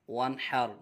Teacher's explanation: نون ساکن کے بعد حرف حلقی میں سے حا اس لیے اظہار ہوگا، غنہ نہیں کریں گے